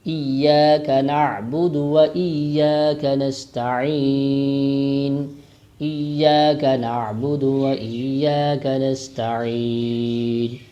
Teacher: سین ہے، سختی سے اس کو پڑھا جائے گا، سیٹھی کی آواز پیدا ہوگی